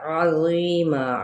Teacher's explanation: اجرن، یہاں پہ کیا ہے، جیم پہ قلقلہ اور تنوین زبر پہ اظہار. عظیما، عین وسط حلق سے اور غو نرمی کے ساتھ.